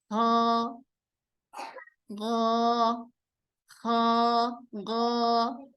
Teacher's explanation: Hakikatnya yang bergerak ini dari akar lidah. Kemudian dia itu ditempelkan atau supaya kita lebih mudah untuk membayangkannya, itu digesekkan ke langit-langit yang berdaging itu.